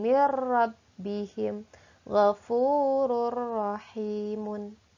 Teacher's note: idgham bilagunnah dileburkan dengan tidak didengungkan